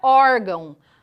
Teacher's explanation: o som que eu estou produzindo não sai exclusivamente da minha boca e sim também do nariz · a sílaba mais forte da palavra órgão é o War é a penúltima sílaba